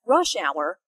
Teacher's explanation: 9:00 a.m. and from about 4:30 to 6:30 p.m. notice that rush hour is a compound noun with the main stress on the first word